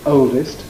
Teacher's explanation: the LD will be attracted into the first syllable because it's more strongly stressed